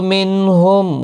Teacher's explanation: نون ساکن کے بعد ہا آیا، اظہار ہلکی ہوگا، یہاں گنہ نہیں ہوگا